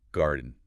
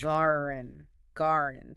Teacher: The sound that results often sounds to listeners like the D sound is heavily reduced or even completely omitted. The mouth position for the D is still there, briefly, but the audible release, the sound that comes out, is primarily nasalized. · The D kind of disappears into the end. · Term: nasal plosive